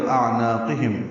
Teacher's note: اعناقہم حمزہ اقصی حلق سے، عین وسط حلق سے نکالیں گے